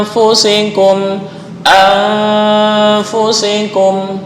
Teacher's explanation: Jadi dibaca antara dengung dan samar seimbang. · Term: ikhfa ausat